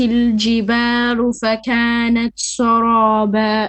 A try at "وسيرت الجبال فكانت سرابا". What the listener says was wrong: Okay, وسيرا. Ra is more heavy. وسيرت الجبال فكانت, and then here sa, not sa, but sa is flat. سرابا. وسيرت الجبال فكانت سرابا.